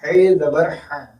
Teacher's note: لیکن خے اور عین میں استعلا نہیں ہے، اس کو درمیانی حلق سے کہا جائے گا، اور اس کی آواز ہے خے زبر خو نہیں کہیں گے، خے زبر ہا. ٹھیک ہے، درمیانی حلق سے آواز نکلے گی